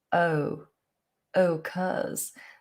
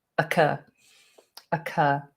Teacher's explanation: some people who are very posh might use a different vowel they might do more of an oh